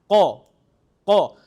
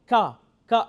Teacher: if I push my tongue a little backwards, I will reach and say qa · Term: qaf